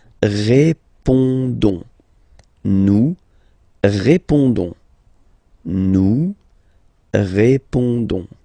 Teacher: Don't pronounce the final S. You only pronounce this on sound.